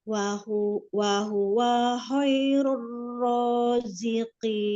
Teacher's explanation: Ini ro-nya dibaca tafhim karena berharokat domah